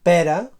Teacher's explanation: en català oriental presenta una E oberta en posició tònica, pera, en català occidental una E tancada, pera, i en català balear una vocal neutra tònica, pera.